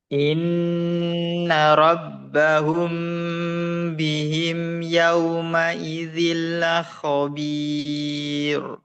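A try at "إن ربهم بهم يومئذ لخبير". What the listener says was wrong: Coba tipiskan lagi la khabir. Ya, terus ro, tebalkan juga ro, dan rabbal ra ro.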